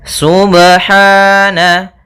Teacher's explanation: Apabila ada huruf ba dia harakatnya sukun maka ada hukum Qalqalah maka harus dipantulkan dalam membacanya